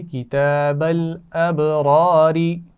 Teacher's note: با پر قلقلہ واضح کیجئے